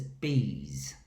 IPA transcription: bi: z